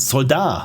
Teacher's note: Also French for soldier, but the T is silent.